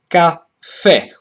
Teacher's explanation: In this case, there is no neutral because the main stress falls on the last syllable, so it's caffè.